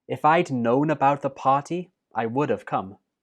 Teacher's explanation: you can say it I would have both are acceptable and the last word come is the main verb so it does get the stress